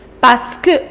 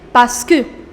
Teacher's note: Remember, you do not pronounce this R. You say parce que.